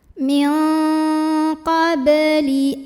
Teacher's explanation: Berikutnya ada hukum qalqalah sugro karena ada huruf qalqalah yaitu ba yang sukunnya asli dan ada di tengah bacaan. Maka cara membunyikannya adalah dipantulkan dengan pantulan yang kecil dan dialirkan.